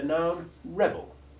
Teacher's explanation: the noun rebel which has stressed short e1 followed by the unstressed short e2 iv sound